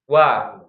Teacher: kalau wau itu suaranya sebenarnya bukan di kedua bibir, tapi di tengah-tengah bibir wa ya. Monyong dulu ya.